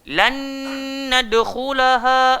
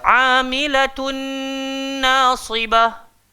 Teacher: bila nun mati bertemu dengan nun, bukan setakat masuk, tapi kena tambah dengung.